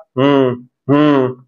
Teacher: नाक में से हवा बाहर निकल रही है नसल साउंड हो गया